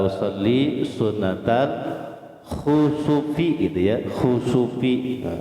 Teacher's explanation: Mahraj kho, tempat keluarnya kho itu di adnal halqi.